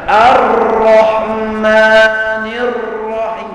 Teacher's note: huruf ra yang bersabdu disembunyikan getar lidahnya